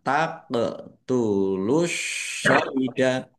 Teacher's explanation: Mad thobi'i dibaca panjang dua harakat. Qof sukun bacaan qalqalah dibaca memantul ditampakkan pantulannya